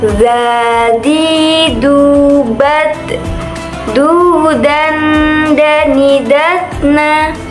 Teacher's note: Dalam melafalkan huruf ga ini, kita harus menyentuhkan ujung lidah kita dengan dinding dua gigi seri bagian atas. Suara mengalir dengan lembut tanpa diiringi dengan mengalirnya udara